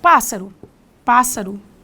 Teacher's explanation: Inclusive a própria palavra proparoxítona que tem antepenúltima sílaba forte